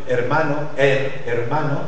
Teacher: le E de l'espagnol hermano est ouvert parce que c'est dans un contexte aussi des syllabes fermées, et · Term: E ouvert